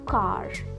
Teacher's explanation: lightly tapping the tip of your tongue against the roof of your mouth. Focus achieving a more subtle R sound.